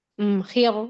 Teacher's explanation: Khir, jadi khi-nya tebal tapi ro-nya tipis. Wa bil yaumil akhir.